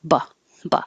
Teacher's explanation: The BE changes to buh because it's not stressed. And that gets really short